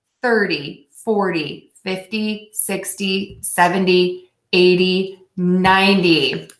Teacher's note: the stress for this set of numbers is going to be on syllable 1